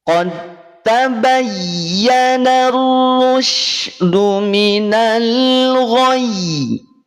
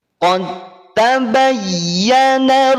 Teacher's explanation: Makhrajnya dal dengan ta itu ada di ujung lidah, bertemu dengan pangkal gigi seri atas. Dal dan ta satu makhraj beda sifat. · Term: idgham mutajanisain